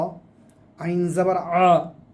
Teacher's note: আ গলার মাঝখান থেকে, কণ্ঠনালীর মাঝখান থেকে